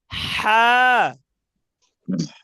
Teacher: আচ্ছা, আমাদের গলার মাঝখানের যে হলক, মানে এই হলকের মাঝখান, মানে গলার মাঝখান থেকে হা উচ্চারণ হবে।